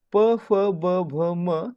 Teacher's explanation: ते उच्चारताना आपल्या ओठांची हालचाल होते आणि आपले ओठ एकमेकांना चिकटतात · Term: औष्ठय वर्ण